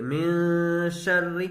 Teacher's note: من شر، تشدید والے حرف کو 2 مرتبہ پڑھتے ہیں، ایک بار پیچھے والے حرف سے ملا کر، ایک بار خود اسے، اور را کو باریک پڑھیں گے اس لیے کہ را کے نیچے زیر ہے۔ را کے نیچے اگر زیر ہو، اس سے را مشددہ کے نیچے اگر زیر ہو، چاہے اس سے پہلے پیش یا زبر ہو تو را باریک ہوگی۔